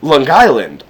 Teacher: if you're from the island the way you would pronounce it is L Island